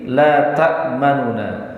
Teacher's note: Ar-raum itu menjadikan nunnya ada dua. Itu ar-raum. Tetapi nun yang pertama itu dibaca lebih samar daripada nun yang kedua